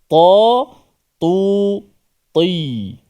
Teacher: Ta tu ti dibaca dengan tebal, ta yang berbaris di bawah.